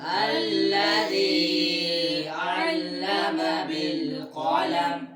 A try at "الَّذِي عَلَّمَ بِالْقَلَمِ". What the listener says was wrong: ध्यान रखो इस पर मद तो नहीं है जो हम मद की तरफ जा रहे थे। الذي علم بالقلم.